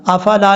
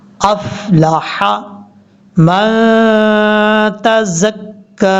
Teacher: حمزہ کو فا سے ملانا ہے لیکن فا میں قلقلہ نہیں کرنا، افلا نہیں پڑھنا، افلح. لام کے بعد جو ہا ہے یہ ہا بریک ہے، حروف حلقی میں سے ہے اس لیے اس کو بریک پڑھیں گے. یہ گلے کے درمیان سے ادا ہوتا ہے